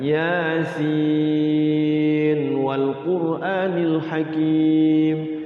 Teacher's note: Jangan yasinu didogomkan, salah, tapi diidharkan.